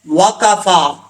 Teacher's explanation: ٹھیک ہے, وقفا. آگے فا ہے, فا کے اوپر کھڑا زبر ہے, ایک الف کی مقدار, اس کو لمبا کر کے پڑھیں گے